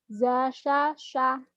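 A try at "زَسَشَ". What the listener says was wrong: Kurang, sin kecil dulu baru sin gede. Sin gede, za, sa, sya gitu.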